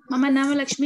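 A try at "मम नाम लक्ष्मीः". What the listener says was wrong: The Visarga also should be pronounced. Only when you are... Only when the Sambodhana is there, the Visarga is dropped.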